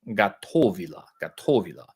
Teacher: With Russian, the soft a or soft o, the unaccented o is pronounced a, and the accented o is pronounced o.